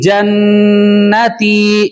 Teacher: اور پھر اس کے بعد جنتی میں نون آ رہا ہے, اور نون پر کیا ہے, تشدید ہے, نون مشدد ہوگا یعنی غنہ ہوگا